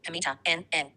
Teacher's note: there is complete oral closure, air escapes through the nose. Because of that oral closure, they're also plus consonantal. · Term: nasals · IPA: /m/ /n/ /ŋ/